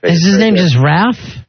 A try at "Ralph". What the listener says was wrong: they don't say Ralph they say Ralph the L is silent idiots